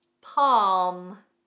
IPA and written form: pɑːm (Palm)